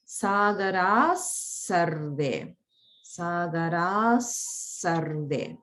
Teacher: Just keep in mind the holding on Sagara sarve. Because the visarga there is pronounced like sa and there's holding.